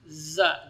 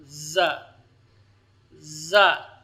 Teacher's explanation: Sementara za tidak terdapat padanya sifat hamas. Za, jadi tanpa keluar udara.